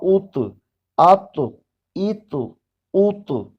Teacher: یہ موٹا بھی پڑھا جائے گا، طا سبز رنگ سے ظاہر ہے اور اس کو قلقلہ بھی کریں گے، ہلا کر پڑھیں گے